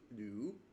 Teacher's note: The second tone would be upwards